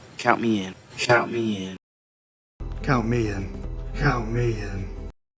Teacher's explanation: notice how we emphasize the words count and in